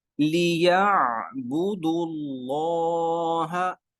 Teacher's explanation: دال کے اوپر پیش ہے، تو ہم نے اصول پڑھا تھا لفظ اللہ سے پہلے پیش ہوگی تو لفظ اللہ کو موٹا پڑھیں گے